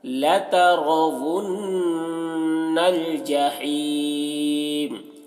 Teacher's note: یہ واو ہے تو ونل ونل، انل نہیں بولیں گے، ونل، نون مشدد غنہ کے ساتھ میں